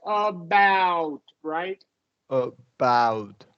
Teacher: it's always going to function as a schwa, that A, always.